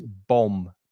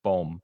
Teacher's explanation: The second B is silent, so you don't hear the second B.